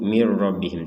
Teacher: langsung mir rabbihim, tidak ada dengung, tidak ada samar